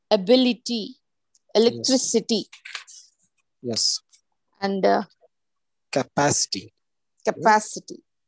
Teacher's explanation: i t suffix have the primary accent on the anti-penultimate syllable